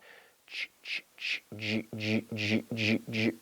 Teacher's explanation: we take the CH sound, and then we activate the vocal cords, and we have ch, ch, ch, j, j, j, j, j. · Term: J sound